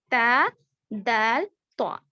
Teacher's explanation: زبان کی نوک اوپر کے دانتوں کے اندرونی حصے کو لگنے سے ادا ہوتے ہیں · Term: حروف نطعیہ